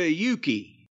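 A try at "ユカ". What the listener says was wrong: You said Yuki. It's Yuka, not Yuki. Yuka Sakazaki, not Yuki.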